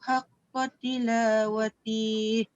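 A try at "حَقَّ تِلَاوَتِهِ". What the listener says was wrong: Jangan panjang. kalau berhenti situ, jangan pandang yang ya kat ujung tu. Bila kita berhenti dekat tihi tu, dia lalu tak dekat yang tanda panjang tu. Tak lalu kan? Kita ta dengan ha. Jadi haqqa tilawati. Pendek. Kalau dia nak lalu kan, dia nak terus barulah watihi ula. Melainkan kalau dekat huruf ni antara ta dengan ha tu tengah dia ada ya. Barulah baca tilawati. Kenapa panjang? Sebab ada ya.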